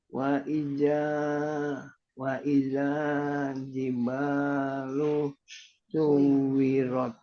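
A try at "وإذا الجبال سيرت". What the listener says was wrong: Suyi. Pakai Y. Suyirat. Bukan pakai W. Suwi tapi suyi. Pakai ya ini. Suyi, oke?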